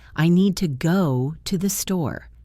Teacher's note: the most important words are need, go, and store. We say them a bit louder and a bit longer. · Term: stress and intonation